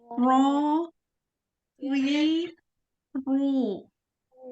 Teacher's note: Ro ketika tebal itu takrirnya sekali. Sama juga ketika kasroh, takrirnya sekali juga getarannya ya.